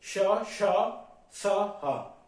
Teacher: हा आपका सघोष है और श श स आपके अघोष है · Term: संघर्षी व्यंजन